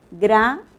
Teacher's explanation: en la sílaba gra estamos pronunciando el fonema oclusivo velar